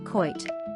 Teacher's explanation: In a broad accent, a word like kite sounds more like coit.